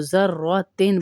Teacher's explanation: गुन्ना नहीं करेंगे हम इस वजह से कि आगे हुरूफ़े हल्की है, तो ज़र्रतिन पढ़ेंगे, ज़र्रतिन नहीं पढ़ेंगे.